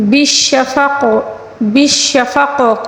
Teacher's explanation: اقسم قاف کے اوپر جو ساکن ہے اس کو قلقلے کے ساتھ پڑھیں گے، کیونکہ بالشفق بالشفق قاف کے نیچے جو زیر ہے اس کو ہم ساکن دے کر پڑھیں گے، لیکن جب ہم ساکن دیں گے تو اس کو قلقلے کے ساتھ پڑھیں گے